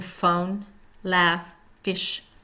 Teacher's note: the top teeth are on the bottom lip and there is a continuous airflow with friction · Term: voiceless F sound